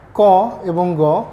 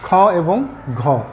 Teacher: আবার অল্পপ্রাণ কণ্ঠ ক এবং গ মহাপ্রাণ কণ্ঠ খ এবং ঘ